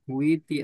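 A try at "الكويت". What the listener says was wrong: kuwai. Baunya fathah lebih pas. Kuwai.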